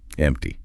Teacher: notice the P sound. It's almost silent.